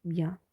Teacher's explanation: Nos da por tanto la yod y la vocal anterior semiabierta